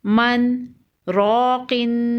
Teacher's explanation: سکتہ کریں گے۔ سکتہ یعنی کہ تھوڑی دیر آواز روک دیں گے اور سانس نہیں توڑیں گے